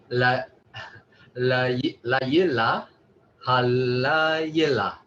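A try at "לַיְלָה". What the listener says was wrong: That was good articulation, but the emphasis is at the is on the la. So layela, halayela.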